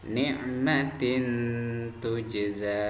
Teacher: Lafaz ni'matin tujza itu dibaca samar-samar karena kasrah tanwin bertemu dengan ta. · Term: ikhfa